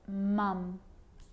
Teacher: you'll see that all of my lips are touching all the way along